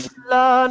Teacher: پہلے ہے سین، یہ باریک ہے، اور یا کے فوراً بعد جی ہے صاد اور یہ تھوڑا موٹا ہے